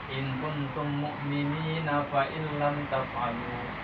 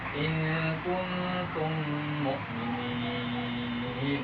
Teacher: Jadi balik ke hukum asal. Jadi mad tabi'i, panjangnya jadi mad panjang mad tabi'i, cukup satu harokat, satu alif.